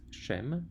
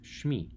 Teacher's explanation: Shem has a long E vowel, and suddenly we shorten the vowel